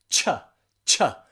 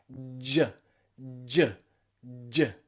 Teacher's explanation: Make sure your vocal cords are vibrating too.